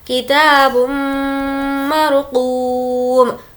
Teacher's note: मीम पर तजदीद है, गुन्ना होगा।